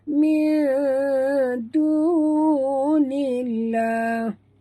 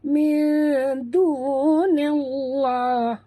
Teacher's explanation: Alif lam di sini, alif lam pada lafzul jalalah dibaca tipis. Ya, dibaca tipis kerana nun berbaris di bawah ya.